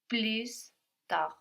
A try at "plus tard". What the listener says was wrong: Almost. We don't have the S though. So again, we don't pronounce that final consonant now. We have plus written, like plus in English, but we pronounce plus.